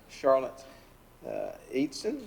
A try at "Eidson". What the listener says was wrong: It's okay. It's Idson. It's like the E is silent.